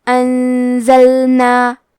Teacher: کلمت انزلنا میں نون ساکن ہے، پھر حرف الزے ہے، زے حروف الاخفاء میں سے ہے تو ہم یہ حکم کو غنہ کے ساتھ ادا کریں گے